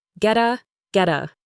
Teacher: The t and get changes to a soft d sound and links to the a. So get a sounds like get a get a get a. · The next two words, get a, blend together. The T in get changes to a soft D sound and links to the A.